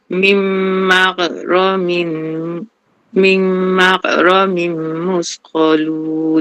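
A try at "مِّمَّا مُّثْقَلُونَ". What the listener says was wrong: Okey, dia ada lantun. Okey, latih Okey, latih. Tu katanya rin tu jangan lantun. Dia baca lantun.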